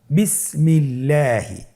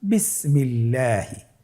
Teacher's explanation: আল্লাহ শব্দের দ্বিতীয় লামের আগে এখানে জের এসেছে, আপনারা জের দেখতে পাচ্ছেন। এই জন্যে আল্লাহ শব্দের দ্বিতীয় লামটিকে বারিক করে পাতলা করে পড়তে হবে।